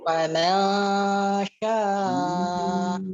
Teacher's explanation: Untuk ikhfa-nya perhatikan, jangan ditebalkan. Gunnahnya tipis.